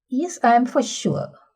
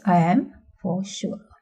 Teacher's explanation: rise fall could be realized only by word yes, or it could stretch out across the entire stretch. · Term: rise fall intonation